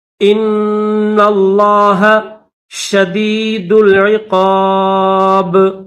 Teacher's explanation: حمزہ کو نون کے ساتھ ملائیں گے اور نون کو لام کے ساتھ ملائیں گے. نون کے اوپر بھی تشدید ہے، لفظ اللہ کے اوپر بھی تشدید ہے، تو کیسے پڑھیں گے؟